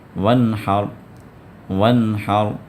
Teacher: اب یہاں پر نون ساکن آ گیا، اور نون ساکنہ کے بعد ہا آیا، اور ہا حروف حلقی میں سے ہے، حروف اظہار میں سے ہے، تو لہٰذا اب نون ساکنہ کے بعد ہا آنے کی وجہ سے اس نون کو آپ ظاہر کر کے پڑھیں گے، اس نون میں اخفا نہیں ہوگا، وانحر نہیں پڑھنا ہے، بلکہ جو پڑھنا ہے وانحر، وانحر۔